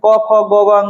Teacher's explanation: कवर्ग का उच्चारण स्थान कंठ से होता है